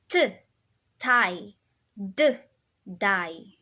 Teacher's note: we'll use the tip of our tongue and the tooth ridge, that hard place behind your upper teeth